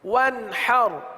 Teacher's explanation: اب دیکھیں آخر میں سکون ہے, ساکن ہے, را ساکن ہے, وقف میں بھی اس کو ساکن ہی رکھیں گے